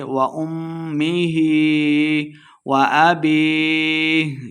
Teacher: میم مشددہ غنہ کریں گے